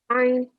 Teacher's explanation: Ayn actually is one of your throat letters, but it comes from the middle of your throat